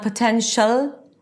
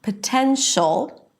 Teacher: you have to engage the back of the tongue to create that really dark ol sound